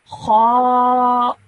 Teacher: So when I say it, my mouth is rounded and I'm producing a thick and heavy sound. Kha. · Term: thick sounding letters